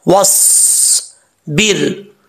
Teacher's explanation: वाओ को जब स्वाद से मिलाएंगे तो अलिफ बीच में गिर जाएगा